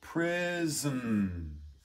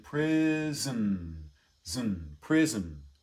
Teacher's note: You might actually go sort of straight from the Z onto the N. Prison, zn, prison. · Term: syllabic